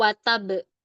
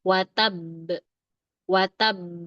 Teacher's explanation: Tahan dulu suaranya. Lamain dikit dulu. Lamain sedikit. Setelah itu baru pantulkan.